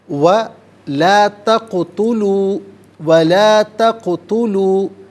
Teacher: تقتلوا میں قاف ساکن ہے، لیکن یہ چونکہ حرف قلقلہ ہے تو یہاں ادائیگی کے وقت جنبش محسوس ہونی چاہیے